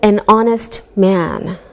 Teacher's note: We say an hour because we don't pronounce the H, so it sounds like a vowel sound. Same with an honest man.